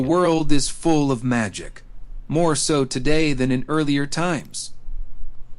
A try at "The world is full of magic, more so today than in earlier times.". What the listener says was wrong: earlier times, right? That's the wrong intonation. So here's how I would say it. The world is full of magic, more so today than in earlier times.